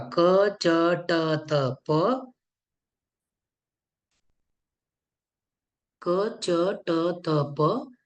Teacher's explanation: उच्चारण करण्यासाठी प्राण कमी लागतो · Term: अल्पप्राण